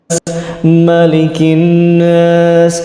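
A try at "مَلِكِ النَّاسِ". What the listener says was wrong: Nah itu Malikin nas, kurang lama nun tasydidnya.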